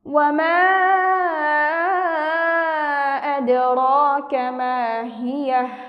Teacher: দালের উপর সাকিন অর্থাৎ কলকলা হরফের উপর সাকিন, আমরা এখানে কলকলার প্রতিধ্বনি করে পড়ব। র খাড়া জবর র, খাড়া জবর হওয়ার কারণে আমরা এখানে এক আলিফ টান দিয়ে পড়ব।